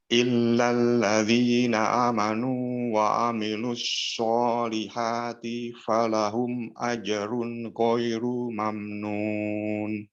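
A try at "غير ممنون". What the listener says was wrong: Baik, runya pendek ya. Ghairu mamnun.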